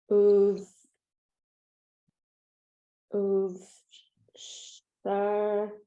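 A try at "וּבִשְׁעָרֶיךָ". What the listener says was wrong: Careful. You can pronounce the vowel under the vec.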